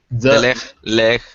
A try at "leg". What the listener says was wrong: You got to do a hard G. A hard G. Leg.